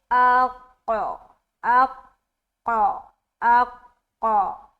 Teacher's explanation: حمزہ کو قاف سے ملا کر جدا کرنا ہے تو قلقلہ کی صفت پیدا ہوگی